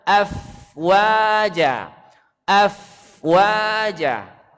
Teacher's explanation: keluarnya suara itu gigi atas menyentuh bibir bawah bagian dalam · kalau dia sukun mengalir suara f